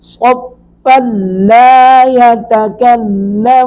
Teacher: والملائکۃ صفاً، فا پر تنوین ہے، نون تنوین کے بعد اگر وقف کریں گے تو صفا پڑھیں گے، متصلاً پڑھیں گے تو پھر فا کو لام سے ملائیں گے، درمیان میں جو نون تنوین ہے وہ مدغم ہو جائے گی لام میں، تو ادغام ہوگا بلا غنہ۔